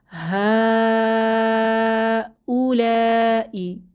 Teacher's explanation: ইনি এরপর হা উলাই এখানে আমরা দেখতে পাচ্ছি হা এটা হচ্ছে মাদ্দে মুত্তাসিল বা সংযুক্ত মাদ এখানে ছয় হারাকা পরিমাণ আমাদের টেনে পড়তে হবে